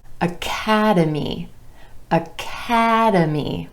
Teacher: 4 syllables in this word with emphasis on the second syllable and the a vowel sound